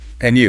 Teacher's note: when Americans say, And you in a casual greeting, they usually use a rising intonation.